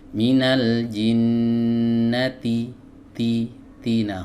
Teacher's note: huruf Ta ini keluar dari ujung lidah bertemu dengan pangkal gigi seri atas ya dan huruf Ta ini memiliki sifat hams ya tapi hati-hati